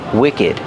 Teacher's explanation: Wicked has the short is sound too, and we pronounce the ed like ud.